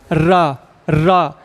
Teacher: जीभ ऊपर टकरा रही है, आगे वाले भाग में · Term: मूर्धन्य